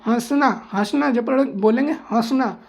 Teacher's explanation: इसका उच्चारण करते समय हवा नाक और मुंह दोनों से निकलती है। नाक और मुंह दोनों का मतलब यहाँ पे नाक से निकलेगी, केवल नाक से, और यहाँ पे हवा नाक और मुंह, नाक से कम लेकिन हवा मुंह से ज़्यादा निकलेगी, ठीक है, मुंह से सबसे ज़्यादा निकलेगी, नाक से हल्की सी, ठीक है, समझ गए। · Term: अनुनासिक स्वर